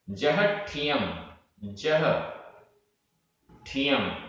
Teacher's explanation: यहां पर जहा ह में बड़े आ की मात्रा, लेकिन ठियम में आधा टा और ठा, ये संयुक्त अक्षर है। संयुक्त अक्षर होने के कारण जो पूर्व का स्वर ह में बड़े आ की मात्रा है, दीर्घ स्वर, वह छोटा हो गया, ह्रस्व हो गया।